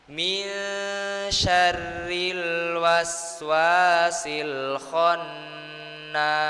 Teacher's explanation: Di kalimat min syarri. Nah, itu kita baca nunnya itu disamarkan Pak Bu. Jadi kayak gerenyem lah. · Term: ikhfa